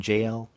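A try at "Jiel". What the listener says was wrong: I say Yale, but yeah, pronounced like a Y.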